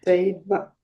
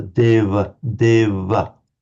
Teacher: It's pronounced certainly among the Northern Indians between vowels as something between a V and a W. It's with the lips slightly together.